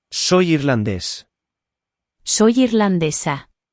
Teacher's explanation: There is an accent on irlandés, so the stress is where the accent is, and on the second to last syllable of irlandesa, where there's no accent.